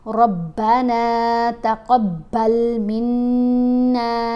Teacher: रब्बना तक़ब्बल मिन्ना, अब बा के ऊपर तशदीद है ना, रा को मोटा पढ़ते हुए बा से मज़बूती से मिलाएंगे, फिर बा के ऊपर जो ज़बर है वो पढ़ी जाएगी।